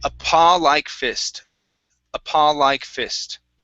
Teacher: you had a little bit of an oo there at the end, a paw. Okay, so it's just an ah, end on one vowel sound.